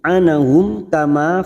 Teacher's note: Aunal anahum, kita uraikan dari sini karena kita membaca wasol atau terus, maka mim sukun bertemu kaf idhar safawi, dibaca jelas tanpa mendengung